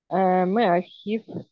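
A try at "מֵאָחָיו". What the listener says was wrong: Ах, Меахав, тут почему-то так странно читается, но спроси у более умных людей в грамматике. Не Ахив, а Ахав.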